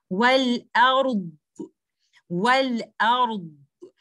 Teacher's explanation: the timing that I'm going to give to dhad should be more than ra, because ra is a letter of bainiya and dhad is a letter of rakhawa. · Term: letter dhad